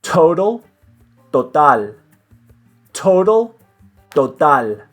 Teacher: so no air is coming out of your mouth when you're making the T sound